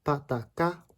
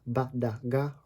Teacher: Plosives are where you stop your airway and abruptly start it again. Pa, ta, ka are unvoiced, ba, da, ga are voiced.